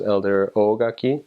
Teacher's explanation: the O needs to be long or else it means something completely different. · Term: elongated vowels